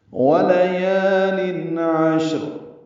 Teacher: قسم ہے صبحوں کی، ولیال عشر، واو لام جلدی پڑھیں گے، یا الف مدہ ہے تو حرکات لمبا کریں گے۔ تنوین کے بعد عین آنے کی وجہ سے اظہار ہے، ولیال عشر، عین وسط حلق سے ادا کریں گے۔